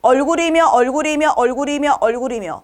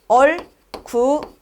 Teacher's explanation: 이렇게 모음으로 시작하는 글자 앞에 있는 받침을 올려서 읽어주죠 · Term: 이어적기